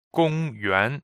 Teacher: 公 is first tone. 园 is second tone.